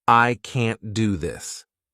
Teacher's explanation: Americans don't really pronounce this T in the end